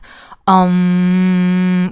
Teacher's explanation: So ‘om’ is a combination of the sound ‘a’ ‘oo’ ‘m’